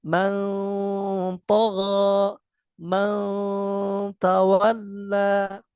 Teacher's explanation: Jadi cara membaca ikhfa aqrab samarnya lebih dominan daripada gunnah atau suara dari hidung.